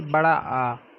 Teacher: जब बड़ा आ का हम उच्चारण करेंगे तो मुख हमारा सर्वाधिक खुलेगा। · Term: विवृत स्वर